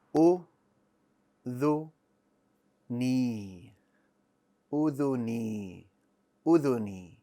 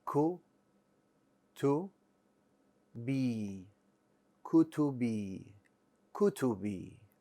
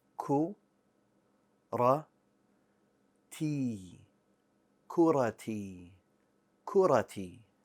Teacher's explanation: the kasra is made longer because of the appearance of the vowel ya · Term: the extension of the vowel